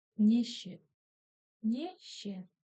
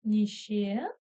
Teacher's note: Буква Е читается ровно точно так же, как в алфавите. Ударение на второй слог. Нище. Погнали дальше.